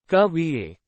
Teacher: The Voice Falls towards the end